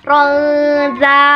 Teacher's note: Ronza ada huruf engnya, jadi hukum tajwidnya adalah ikhfa hakiki karena huruf za termasuk huruf ikhfa hakiki. Ada huruf nun sukun bertemu dengan salah satu huruf ikhfa hakiki yaitu huruf za, maka dibacanya ditahan 2 harokat.